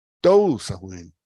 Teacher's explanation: tou es la sílaba pesada y tónica.